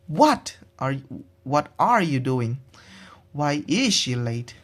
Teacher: The voice arises at the end of the sentence. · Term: rising intonation